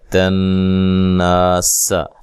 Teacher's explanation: نون مشدد پہ غنہ ضروری ہے، غنے کی مقدار 1 الف کے برابر ہوتی ہے